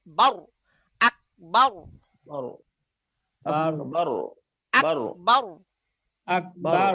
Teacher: রটাকে মোটা করে মুখ ভরে বলতে হবে